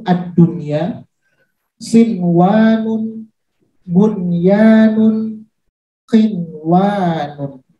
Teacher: cara membacanya jelas sesuai dengan tulisan tanpa berdengung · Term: izhar mutlaq